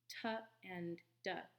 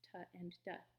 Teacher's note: you should notice both of those are alveolar stops, t and d